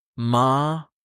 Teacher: It dips, then rises. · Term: broken rising tone